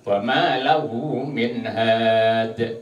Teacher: kalau dal ini termasuk huruf qalqalah. Nah, ketika waqaf seperti ini harus mental.